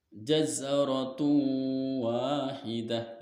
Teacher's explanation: Cara dibacanya yaitu masuk dengan dengung dan ditahan sampai 3 harokat. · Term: idgham bi gunnah